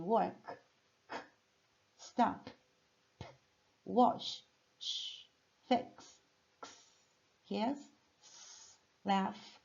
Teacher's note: São sons que a gente produz sem a vibração das cordas vocais. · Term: Sons sem voz